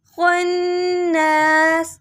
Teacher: من شر وسواسل خناس، خوا کو موٹا کرنا ہے، نون پر تشدید ہے، نون سے ملانا ہے. سین کے نیچے زیر آ رہا ہے لیکن وقف کر رہے ہیں تو ہم زیر کو نہیں پڑھیں گے.